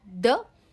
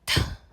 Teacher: the is voice sound and th is unvoiced sound